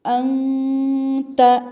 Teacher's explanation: انت نون پر اخفا ہوگا، نون ساکن پہ، کیونکہ تا حروف اخفا میں سے آ رہی ہے، نون کو